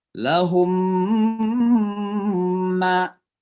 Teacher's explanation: Suara mim dimasukkan ke dalam mim, ya. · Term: idgham